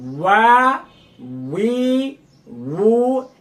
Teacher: এই যে দেখেন আমার মুখের দিকে লক্ষ্য করুন, সবগুলোই কিন্তু ঠোঁটগোল হবে।